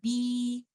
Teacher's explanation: مخرج کے دو کمپوننٹس یعنی دو لپس کو ایک دوسرے سے علیحدہ کریں گے اور اپنے لوور جو کو نیچے والے جبڑے کو تھوڑا سا پیچھے کی طرف کھینچیں گے تو اس صورت میں آپ کی آواز نکلے گی بی.